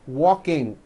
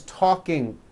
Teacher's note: there's just this little K sound at the end of the ing sound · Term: K release sound